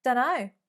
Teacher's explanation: There you can see that we've omitted the T sound.